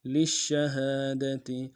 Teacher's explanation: شین کے اوپر تشدید زور دیں گے، تفشی بھی ہے